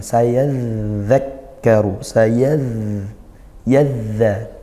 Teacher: Dzal bertasydid kita alirkan suaranya, sayadzakkaru, yadza, dengan makhrajnya ujung lidah bertemu ujung gigi sari atas.